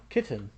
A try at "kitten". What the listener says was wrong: You pronounce both T's. I feel like most people only pronounce one.